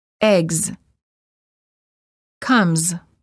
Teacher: Voiced consonants followed by an S are pronounced as z.